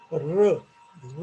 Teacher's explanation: हे 3 ॲरो आहेत. याचा अर्थ your tip of the tongue curls back slightly and then the sound is produced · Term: रेट्रोफ्लेक्स